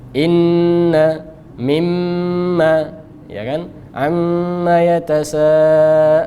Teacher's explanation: nun dan mim ketika dia bertasydid, ini gunnahnya paling sempurna. Gunnahnya paling tinggi tingkatannya.